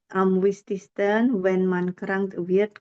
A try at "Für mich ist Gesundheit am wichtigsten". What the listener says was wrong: Also für mich umlaut ya. Für mich ist sama T ya. sama yang für-nya umlaut ya. Pure.